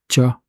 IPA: c